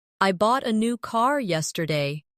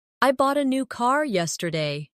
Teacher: The stressed words are bought, new, and car. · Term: sentence stress